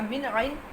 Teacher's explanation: ھذا من عند اللہ، من عند، یہ جو ہے من عند، اس کے اوپر اظہار کا قاعدہ ہے، آپ نے یہاں پہ نون کو ظاہر کر دینا ہے